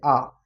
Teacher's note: इसमें हमारा जो मुंह होता है, मुख द्वार क्या होता है, पूरी तरीके से ओपन होता है। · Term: विवृत स्वर